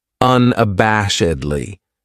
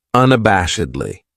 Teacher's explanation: That second syllable has that schwa, that sound, unabashedly.